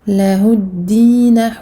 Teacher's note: Lahuddina, lahuddina. Donc je passe directement ici du ha dhamma au dal mushaddad.